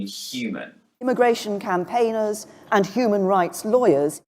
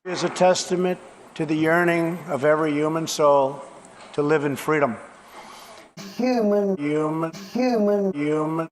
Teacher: in new york accents the h is dropped and we're left with you